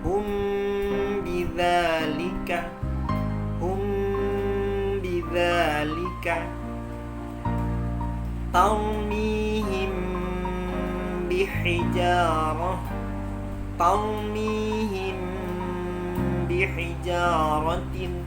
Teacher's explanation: Dan yang ketiga terjadi proses gunnah atau dengung selama 2-3 ketukan. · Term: ikhfa syafawi